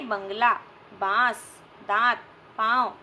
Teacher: अनुनासिक होते हैं जिसमें हवा नाक और मुंह दोनों से निकलती है